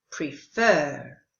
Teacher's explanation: the verb is with the stress on the second syllable, prefer. And of course, if you're learning American English pronunciation, you will pronounce the prefer.